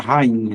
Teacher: Depois do I vem um NH. O que isso aqui faz? Nasaliza o I.